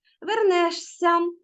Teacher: вимовляється звук подовжений м'який с і знак м'якшення не пишемо